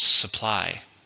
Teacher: Stress on the second syllable.